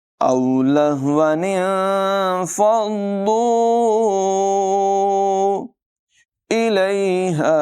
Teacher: ہا کی آواز حلق کے نچلے حصے سے ادا ہوگی